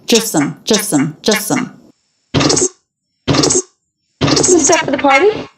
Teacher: three stressed syllables now even though the word just is stressed the t is dropped that's really common between two consonants even in a stressed word